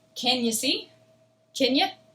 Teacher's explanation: And you is going to turn into ya.